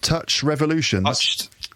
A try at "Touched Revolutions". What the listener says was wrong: Touched Revolutions. Touched with a D. Touched, not touched with a T. Touched with a D. Not douche. TOUCHED. Revolutions. Touched